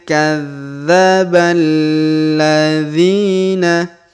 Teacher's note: huruf dzi kita panjangkan dua harakat karena di depannya terdapat Ya Sukun